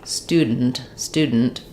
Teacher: we really compress and reduce that unstressed syllable